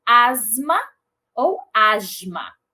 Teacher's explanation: o alofone posicional Z ou J em posição pós-vocálica, seguindo de consoante vozeada. Então, eu tenho as palavras asma ou asma, mas nunca asma.